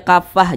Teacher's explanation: kalau dia berwakaf atau berhenti maka dibaca menjadi huruf Ha